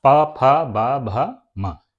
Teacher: इनको बोलने के लिए हमारे दोनों ओंठ आपस में टकराते हैं, इसलिए हम लोग इनको ओष्ठ व्यंजन कहते हैं।